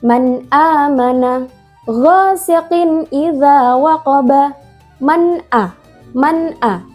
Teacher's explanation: Dibacanya jelas tanpa dengung. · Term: izhar halqi